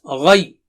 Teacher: Don't do like this. Okay, so gha is thick and high, and ya is thin. So you should say ghay.